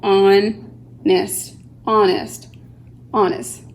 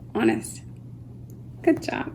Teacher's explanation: The H, once again, is silent. It goes straight to the O.